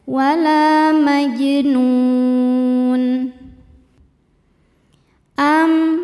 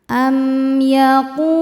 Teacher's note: Maka cara bacanya mim sukun dibaca dengan jelas. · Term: izhar syafawi